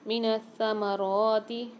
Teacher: تشدید مشدد، سختی اور جماؤ کے ساتھ سا کو پڑھیں گے